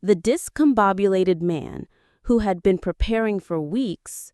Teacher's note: We'll say it slowly and notice the little pauses we make around the new clause